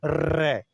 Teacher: देखो आप बोल के रे, तो बेटा कंपन कंपन करके आ रही है कि नहीं? रे कांपती हुई आ रही है अंदर से, तो इसलिए प्रकंपित वर्ण बोलते हैं। प्रकंपित या लुंठित वर्ण इसको बोला जाता है।